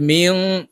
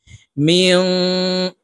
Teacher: মিম নুন জের মিং গুন্না হবে, নুন সাকিনের পরে ইকফার হরফ জিম আসছে, তাই এই নুনকে নাকের ভিতরে লুকাইয়া গুন্নার সহিত পড়তে হবে